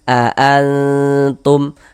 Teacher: Nah, cara membacanya dibaca samar. Jadi, cara membaca ikhfa itu dibaca samar dan juga didengungkan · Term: ikhfa hakiki